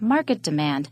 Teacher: it is a compound noun so demand is not stressed